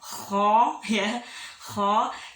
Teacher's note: Tapi kalau kho itu ada nafas keluar ya.